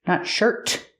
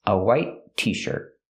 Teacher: in the word shirt at the end of the word is a stop T.